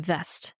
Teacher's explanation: you're not blocking that airflow for the B